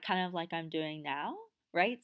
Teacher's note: they'll have something more of an uptalk where each line sounds a little bit like a question